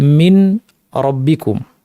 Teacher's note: মিন নুন সাকিন তারপরে রব্বিকুম র আছে। এরকম ক্ষেত্রে আমরা নুন এবং রকে ইদগাম করবো বা সংযুক্তি করব